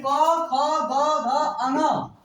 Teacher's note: इसका उच्चारण हम करते हैं कंठ से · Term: कंठ वर्ण